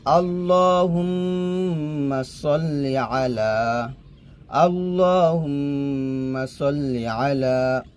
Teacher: না আমরা নাকি সাল্লি বলি সাদ কে সিন বানাই ফেলি তো সাদ কে সিন বানাই পড়বেন না সাদ মোটা করে পড়বেন